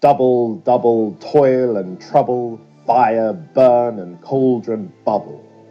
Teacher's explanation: a stressed syllable followed by an unstressed one